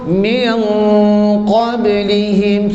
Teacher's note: Cuba tuan-tuan sebut min qablihim, 1 2 mula. Nun mati jumpa qab, ada dengung tak? Ada dengung. Dengung tu berapa harakat? 2 harakat. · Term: ikhfa